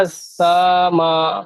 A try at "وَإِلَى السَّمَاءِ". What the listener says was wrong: সা টান হয়ে যাচ্ছে। জি মাশাআল্লাহ, এখানে টান কেন হবে বলুন তো? মধ্যে মুত্তাসিল। আলাদা শব্দের মধ্যে হামজা আসলে মধ্যে মুনফাসিল হয়, একই শব্দের মধ্যে আসলে মুত্তাসিল।